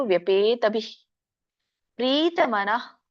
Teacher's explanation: ವಿಸರ್ಗ ಇರೋದ್ರಿಂದ ಬಿಹಿ ಅಲ್ಪವಾಗಿ ಹ ಉಚ್ಚಾರಣೆ ಮಾಡಬೇಕು